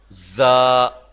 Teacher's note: زا سختی کے ساتھ، سیٹی کے ساتھ